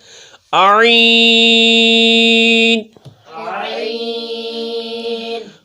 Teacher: حلق کے درمیان والے حصے سے ادا کرنا ہے